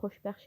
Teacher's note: Xoşbəxt sözündə də t samiti tələffüz zamanı düşüb. Xoşbəxt şəklində olur.